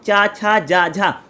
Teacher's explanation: तो मेरी जो जीभ है ऊपर जाकर के टकरा रही, इसको बोलते हैं ताल्लू